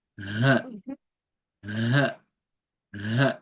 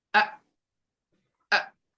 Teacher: The ha has vibration, but the hamza does not have. It's a sharp sound.